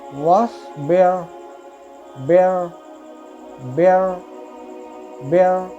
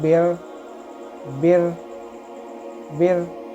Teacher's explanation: मोटा पढ़ेंगे तो बिर, बिर, मुंह आपका गोल होगा।